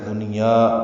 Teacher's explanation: دنیا میں نون ساکن کے بعد یا ایک کلمے میں آنے کی وجہ سے اظہار مطلق ہوا · یا کو 2 حرکات لمبا کریں گے